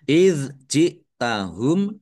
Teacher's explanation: Idz jahum dal sukun bukan qolqalah jangan dipantulkan